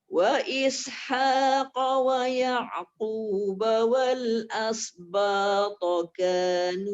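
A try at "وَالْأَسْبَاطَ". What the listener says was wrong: As tu nipis sikit Bonda. Wal as. Kalau as dia jadi hampir sad. Wal asba.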